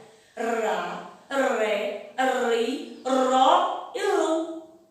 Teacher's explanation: Nós vamos estudar o R com o som fraco, que é aquele R que aparece no meio da palavra, que tem aquele som, parece que a nossa língua está enganchada na nossa boca